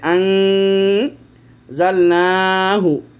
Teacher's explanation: আন এখানে নুনটা নুন সাকিনের পরে যা একফার হরফ হয়েছে এজন্য নুন সাকিনের উচ্চারণটা একফা হবে গুন্না হবে সাথে